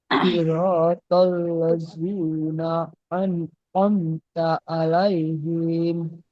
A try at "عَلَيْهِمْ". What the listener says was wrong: টান দিলেন কেন? হিম শেষে বলছেন কেন?